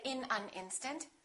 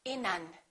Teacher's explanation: We would connect the final consonant to the next vowel. So this N and this A would be said together.